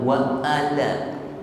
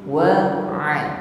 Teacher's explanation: ain, menekan pada wasatul halqi, tenggorokan tengah, bukan wa'ala.